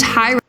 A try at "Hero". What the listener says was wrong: And also, it's pronounced Hero, not Hyro.